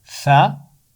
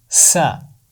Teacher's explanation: सा की आवाज़ नरम होती है और सीन की आवाज़ में सख्ती या सीटी होती है। सा की आवाज़ है सा और सीन की आवाज़ है सा।